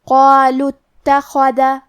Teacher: کلمت اتخذ میں شروعات میں الف ہے، یہ حمزۃ وصل ہے لہذا ہمیں حمزہ کو ظاہر نہیں کرنا ہے. ہم یہ کلمہ کو ایسے پڑھیں گے قالوا اتخذ.